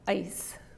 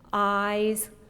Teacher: not because of the S and the Z but because of the vowel duration